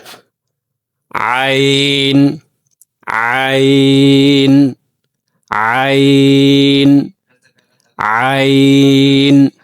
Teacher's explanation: ع የሚወጣው ከወሰጥ الحلق ነው